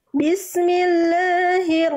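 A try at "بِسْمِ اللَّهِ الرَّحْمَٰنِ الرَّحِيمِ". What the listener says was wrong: Bunda melafalkan hak kecilnya belum tepat dari bagian tengahtenggorokan pastikan tepat dari bagian tengah tenggorokan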